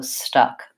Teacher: stuck has the schwa vowel. In this word, it's a stressed schwa because it's a stressed syllable.